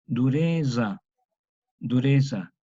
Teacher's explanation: Romance español, este grupo T-Yod, como lo veremos oportunamente después, están entre vocales, entonces va a dar origen a una consonante africana sonora, una Z antigua, que se pronuncia como una cuasi DS